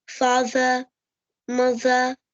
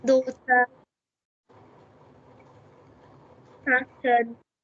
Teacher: In British, the R sound is always silent whenever it comes after a vowel.